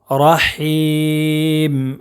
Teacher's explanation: نیر، الرحمن الرحیم، یہاں بھی بڑی ہا ہے، اس کو رحیم ایسا پڑھیں گے۔ رحیم چھوٹی ہا نہیں پڑھنا ہے، بڑی ہا پڑھنا ہے